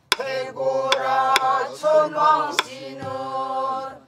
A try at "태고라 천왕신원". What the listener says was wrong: 천왕신원 말고 태고라 천왕신 천왕신원 천왕신원 거기서 꺾어줘야 반음으로 해 그래야 거기서 뭔가 이렇게 개면조의 맛이 살아 태고라 천왕신원